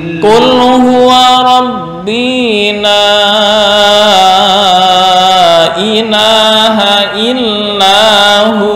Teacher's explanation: La kepanjangan, illa hanya 2 harokat.